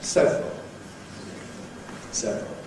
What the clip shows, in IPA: ˈsevrəl